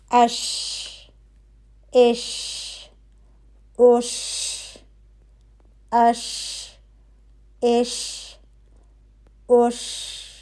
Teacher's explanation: ٹھیک ہے, جیم کے لیے ہماری زبان اوپر جا کے بالکل لگ رہی تھی قوت کے ساتھ, اور شا کے لیے ہماری زبان اوپر اٹھے گی, زبان کا درمیانی حصہ اوپر اٹھے گا, لیکن وہ اوپر جا کے لگے گا نہیں, قریب تالو کے قریب ہو جائے گا. اس کی وجہ سے منہ کے اندر اس حرف کی آواز اور ہوا پھیلتی ہے. · حرف ش کے لیے وسط اللسان یعنی آپ کا زبان کا درمیانی حصہ اوپر تالو کی طرف اٹھتا ہے اور تالو کے قریب ہو جاتا ہے, لیکن زبان اوپر تالو پہ نہیں لگتی. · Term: حرف شین, شین